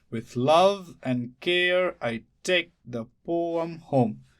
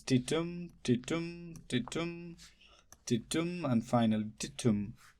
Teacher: So the pattern is unstressed followed by stressed, unstressed, stressed. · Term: iambic pentameter